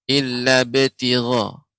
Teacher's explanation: huruf ba ketika sukun maka dia menjadi qalqalah, sifatnya qalqalah tapi tidak ada hamzah di akhirnya.